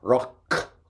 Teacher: Rock is made at the back a k like sound at the back